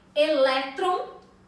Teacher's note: elétron é uma palavra paroxítona elétron tem a penúltima sílaba mais forte